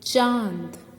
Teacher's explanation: अनुनासिक शब्दों में बोलते समय नाक और मुंह दोनों की सहायता ली जाती है, दोनों पर जोर पड़ता है।